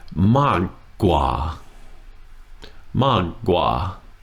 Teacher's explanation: So, mag is falling. And gua is low tone.